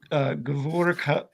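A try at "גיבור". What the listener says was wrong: Gibor. I think you were reading it as Gavul, like a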